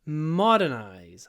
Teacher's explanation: The stress is on the first syllable, modernize